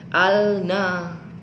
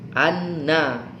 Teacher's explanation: nafaza Hai bertemu dengan huruf nun ini termasuk alif lam syamsiah alif lam nya dimasukkan ke dalam huruf nun Jadi bukan bacaannya al-nafs Hai Tapi bacanya Anne ingat setiap huruf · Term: alif lam syamsiyah